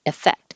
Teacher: The E is not stressed, so it changes to I